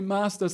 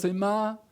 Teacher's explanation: the s can completely disappear such as in several south american pronunciations of spanish